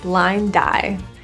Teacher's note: The D in blind can slide over to the I, and that will sound like die. Blind die. That will help you link.